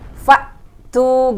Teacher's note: hamzah sukun dihukumi dengan siddah, yaitu kita harus tertahan dulu ketika membaca hamzah sukun sebentar. Faktu gitu, nggak ada aliran nafas ketika membaca hamzah sukun.